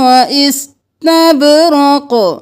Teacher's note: واستبرق نہیں کرنا، سین سائلنٹ رکھیں گے، با کو قلقلہ کریں گے، قاف کو قلقلہ کریں گے